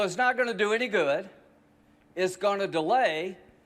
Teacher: he stretches out vowels more than we heard of the new york man or the boston man